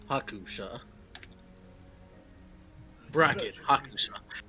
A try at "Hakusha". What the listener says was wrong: No, No, technically that's how you write your name, but that's not how you say it. Anyway, it's a silent bracket.